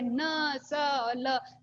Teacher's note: वत्स्य यानी मसूड़ा, जो मसूड़े से स्पर्श करके है न स ल। देखिए न जो ध्वनि थी, न ध्वनि संस्कृत में दंत थी, लेकिन यहाँ पर आकर के वत्स्य हो जाती है।